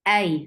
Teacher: أينما تكونوا يدرككم الموت ولو كنتم في بروج مشيدة. أي Hamza is very sharp. Fatha open jaws attached with ya. Make it long, make it soft